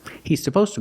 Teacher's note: you don't really hear the is because you have the S. He's supposed to.